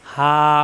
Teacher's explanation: হা আলিফ যাবর হা, মুখ খোলা থাকবে। হা, মাদের হরফ এক আলিফ টান।